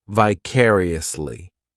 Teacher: this adverb has five syllables and the stress is on that second syllable